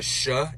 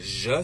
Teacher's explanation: the only real difference between a sha and a j sound is the amount of vibration that we put behind it